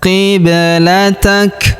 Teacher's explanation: Qiblatak, kemudian kita berhenti di sini karena terdapat tanda berhenti atau tanda waqaf ya, dan huruf ka kita berikan hembusan tipis ya